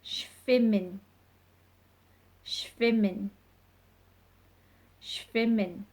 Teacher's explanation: If you see the sound at the beginning is a sh sound, you need to get that sh with the SCH and the W. W's in German take on a bit of a V sound, so it is schwimmen.